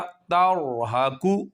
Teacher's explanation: اب یہاں پہ را پر تر تر یہ والی آواز نہیں آنی چاہیے